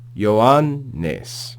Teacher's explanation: Notice there are 2 news together here. So the first nu ends the previous syllable, and the second nu begins the following syllable. So make sure you pause in between them and articulate them both.